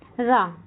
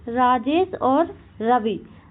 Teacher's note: जिन व्यंजन के उच्चारण के समय जीभ की नोक वायु से रगड़ खाकर कांपती है उन्हें लुंठित व्यंजन कहते हैं